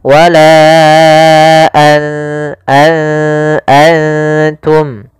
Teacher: maka ketika bertemu ta, nunnya disamarkan ke huruf ta, an langsung kepada makhraj daripada makhraj huruf ta. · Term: ikhfa